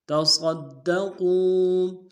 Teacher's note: قاف کو موٹا ادا کرتے ہیں، واو کے ساتھ ملانا ہے، واو مدہ ایک اندار میں کھینچیں گے۔